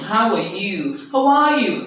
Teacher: if you want to ask the person back you say how are you the stress is on you